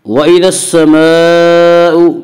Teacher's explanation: الف اور لام کو نہ پڑھیں گے بلکہ بعد والے حرف سے ملا کر پڑھیں گے